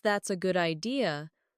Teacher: notice how their voice rises at the end